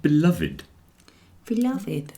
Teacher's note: we always say beloved with the e pronounced which is unusual